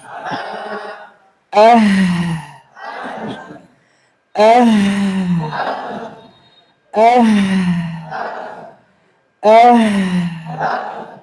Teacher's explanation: হা উচ্চারণের সময় আওতাউরুস সৌতিয়া ধ্বনিতন্ত্র সম্পূর্ণ খোলা থাকবে।